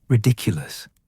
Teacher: The word had a peculiar cadence, almost playful. The emphasis is on the second syllable, ridiculous, and the wand movement should feel light, almost like you're tossing something into the air.